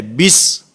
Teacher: بسم اللہ کی ادائیگی میں با کے نیچے کسرہ ہے، لیکن اس کو معروف پڑھنا ہے۔ بسا اوقات توجہ نہیں ہوتی جس کی وجہ سے مجہول ہو جاتا ہے۔